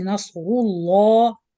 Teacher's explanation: Of course, we have here نصر, the ra, both صاد and ra are heavy. The lam also will be heavy due to the dhamma on ra. So you join ra dhamma with تفخيم, then lam شدة فتحة with تفخيم. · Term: heavy lamb